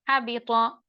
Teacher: हा मफ्तूह है लेकिन हम्स नहीं होगा, महमूहा सा हर्फ अगर होना है तो हा साकिन होता है।